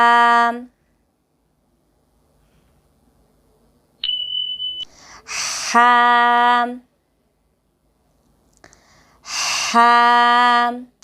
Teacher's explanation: ہا کو ہم حلق کے درمیانی حصے سے ادا کریں گے